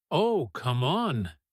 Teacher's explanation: Listen to how oh, come on rises immediately, almost theatrical, a classic sound of friendly disbelief or playful protest. · you cannot tell me gets heavier stress on cannot, almost stretched